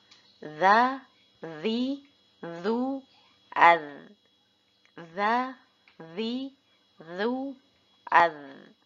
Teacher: Huruf zal sama seperti huruf zo, namun tidak tebal.